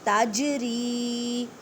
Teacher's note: تجری، جیم ساکن ہے اور جیم یہاں پہ جیم ساکن ہے تو کلکلہ کریں، کلکلہ کا مطلب ہے ہلا کر پڑھنا، تج نہیں کہنا، تجری۔